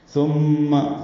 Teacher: ثا نرمی سے پڑھیں گے، میم مشدد پہ غنہ ہے